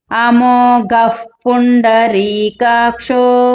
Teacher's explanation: గ అది మహాప్రాణం గట్టిగా పలకాలి